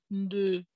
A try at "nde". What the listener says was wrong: Nde, pas nde. Nde. Nde. C'est nde, vas-y. Si tu descends avec le ton.